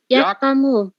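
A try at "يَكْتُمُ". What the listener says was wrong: Ah, ini domah. Domah. Domah. Yaktumu.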